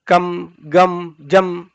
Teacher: ಅನುಸ್ವಾರ ಏನು ನಾವು ಹೇಳ್ತಿವೋ ಅದೆಲ್ಲವೂ ಕೂಡ ತುಟಿಯ ಸ್ಪರ್ಶದಿಂದಲೇ ಆಗುತ್ತೆ